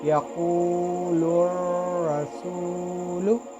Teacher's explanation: रा मुशद्दद पे ज़बर हो तो रा को पुर पढ़ेंगे हम